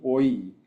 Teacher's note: And oi is a dip thong because it kind of goes from one vowel more of an O to an E · oi is a diphthong because it kind of goes from one vowel, more of an O, to an E, oi. And when it does that, you can see the movement of the second formant and a little bit of the first formant here.